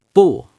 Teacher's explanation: 不, fourth tone, sharp drop